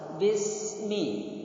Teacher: Sin itu ada hamesnya, ada sifat hames. Jadi mengalir